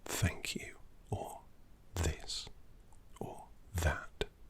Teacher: So when we say thank you, or this, or that, there's a very specific sound, different to the sound that a V makes, which is the. It's the TH, a soft sound produced by the tongue as it touches your top two teeth.